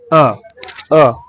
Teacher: आवाज निकलती है हमारे गले से उसे क्या बोलेंगे कंठ स्वर